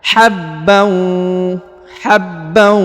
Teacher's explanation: ditahan dua harakat ya contohnya habb habb jadi Ya ditahan ditekan didengungkan dua harakat